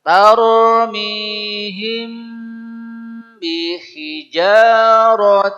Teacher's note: Mim sukun ketemu ba, nanti hukumnya ikhfa syafawi, ada gunnahnya, tahan sejenak. Tarmihim bi hijaratim, tim juga ditahan, ya.